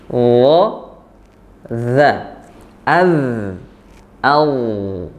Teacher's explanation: Ya, adapun untuk huruf dha ini ada perbedaan dari 2 huruf lainnya, dari huruf dzal dan zai. Huruf dha dia lebih tebal ya. Artinya isti'la atau pangkal lidahnya terangkat ya, tidak terhampar tapi terangkat untuk huruf dha. Jadi bukan biasa, bukan tapi jadi berusaha kita menebalkan huruf dha-nya. · Jadi sama seperti huruf dzal, makhraj dari huruf dha ya, di ujung lidah bertemu ujung gigi seri atas.